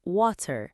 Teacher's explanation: use a very crisp t sound in the word water.